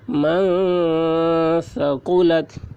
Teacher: نون ساکن کے بعد حروف اخفا میں سے ثا آ رہا ہے، اس لیے نون کی آواز کو ناک میں چھپا کر پڑھیں گے، اس کو اخفا کہتے ہیں۔